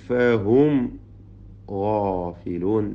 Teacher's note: രണ്ട് സാക്കിനായ മീമ് വരുന്നു. രണ്ടും ഇൽഹാർ ഷഫവി മണിക്കാതെ വെളിവാക്കുക. ഫായിന് മുമ്പിൽ സൂക്ഷ്മതയോടെ ഇൽഹാർ ചെയ്യേണ്ടതാണ്.